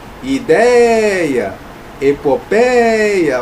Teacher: Então eu tenho uma paroxítona e esse ditongo aberto está justamente na sílaba tônica, na sílaba mais forte.